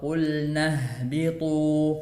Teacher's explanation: Ya, huruf ha sama seperti huruf hamzah, keluarnya dari tenggorokan bagian bawah.